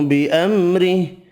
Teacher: را باریک پڑھیں گے، زیر کی وجہ سے